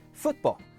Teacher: If you're British, say, football. That stop where the T should be, that's glottal stop.